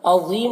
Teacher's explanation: ذا کو پر پڑھنا ہے، حروف مستعلیہ میں سے ہے، اور یہاں پر میم کے اوپر جو پیش ہے یہ سکون سے بدل کر اس کو پڑھیں گے کیونکہ یہاں پر آیت ہے.